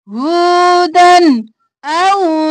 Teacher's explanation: دن جلدی سے اظہار کریں گے کیونکہ آگے حمزہ ہے